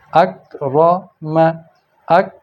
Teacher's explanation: یخشا، یخ، یخ، یہاں آواز رک گئی۔ اکرم، اک، تو آ پہ آواز اوپر گئی اور کاف پہ جا کے رک گئی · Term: جزم